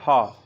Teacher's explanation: जब आप ह बोलते हैं तो आपके मुख का कोई भी दूसरा जो अंग है वह स्पर्श नहीं करता है। मुख में सिर्फ आपके कंठ से निकलने वाली वायु जो है वह पूरी तरीके से मुख से बाहर आ जाती है